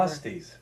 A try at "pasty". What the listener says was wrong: No, yeah, P-A-S-T-Y, not pastry, pasty.